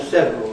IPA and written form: ˋsevrl̩ (several)